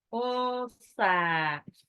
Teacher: nunnya itu ketemu sa jadi ikfa, jadi ditahan. Gunnah, tidak boleh terdengar n-nya.